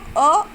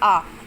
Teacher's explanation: अ में थोड़ा समय लग रहा है और आ में डबल समय लग रहा है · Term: दीर्घ स्वर